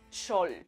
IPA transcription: tʃol